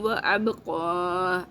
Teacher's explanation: اب قلقلہ کرنا ہے، قاف کو موٹا بولنا ہے